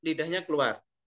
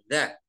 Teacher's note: Kemudian za lidahnya keluar, ya. Za tidak keluar terlalu jauh, tapi ada yang keluar.